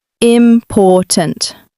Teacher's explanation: in the word important, the stress is on the second syllable. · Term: word stress